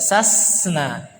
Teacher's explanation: Sasna sama seperti zazna, hamas yaitu harus mengeluarkan nafas juga. Sasna tidak boleh kita baca sasena.